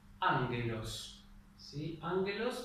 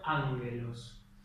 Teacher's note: fíjense que la primera es la gama nasal. La segunda gama es una gama común y corriente